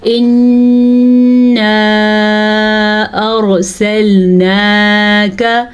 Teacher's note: را کو پر پڑھیں گے, را ساکن سے پیچھے زبر کی وجہ سے. نون کا کھڑی زبر ہے تو ہم اس کو کھینچ کے پڑھیں گے.